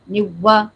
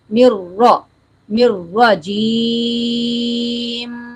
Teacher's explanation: نون کو را سے ملاتے ہوئے را کے مخرج پر زبان کو مضبوطی سے ٹکائیں, اور را کو موٹا کریں. موٹا کرنے کے لیے ہونٹوں کو گول نہیں ہونے دیں, واؤ کی آواز نہیں آنے دیں, اور باریک نہیں پڑھنا.